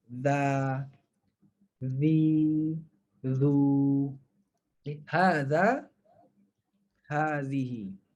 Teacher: Huruf zai kita gunakan huruf Z dalam bahasa Melayu. Kalau huruf zal kita keluarkan sedikit hujung lidah.